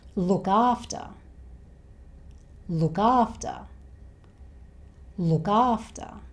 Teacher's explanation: So we have a consonant sound and a vowel sound right next to each other, so we can join these two words to make one long word.